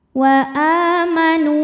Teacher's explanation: dua harakat wa amanu NU hukumnya adalah Mad Thobi'i dahiri sebab ada wau sukun didahului harakat damah maka nunnya dipanjangkan dua harakat